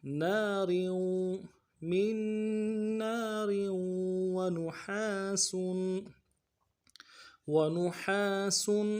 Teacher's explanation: اور را کو نا کے نیچے تنوین ہے، تنوین کو آگے واو کے ساتھ ملانا ہے، واو کے اوپر تشدید زور دیں گے